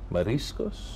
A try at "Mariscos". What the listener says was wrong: So, you have to say the R.